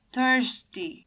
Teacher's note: in thirsty usually the stress falls in the th part thirsty. So if you pronounce it once again, you might feel the stress while you say th for thirsty.